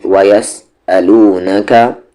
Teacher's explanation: حمزہ کی آواز bottom throat سے یعنی کہ نیچے والے حلق سے